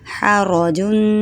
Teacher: را موٹا، ہا حلق سے، حرجن، آگے وقف حرج.